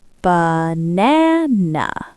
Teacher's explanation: The first A is short. The middle A is long and strong. The last A is short. · The first a and the last a have been punched. They turned into schwas. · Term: stress is in the middle